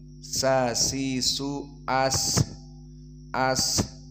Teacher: Maka sin di sini makhrajnya ma'ruf min atrafil lisan ma'a usul atsanaya al ulya, dan sifatnya sin adalah fahasahu syakhsun sakata, berarti dia hams, maka harus ada nafas yang keluar